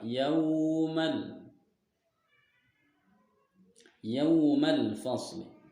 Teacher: waw sukun didahului dengan huruf ya. Huruf ya berharokat fathah. Maka cara membacanya dipanjangkan dua harokat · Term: madlin